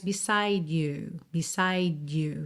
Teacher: Fica um D bem bem levinho